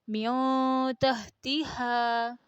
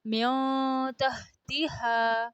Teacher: نون کو نہ پورا ظاہر کر کے پڑھا جاتا ہے نہ مکمل چھپایا جاتا ہے، بلکہ ناک کی آواز کے ساتھ تھوڑا سا چھپا کر پڑھا جاتا ہے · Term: اخفا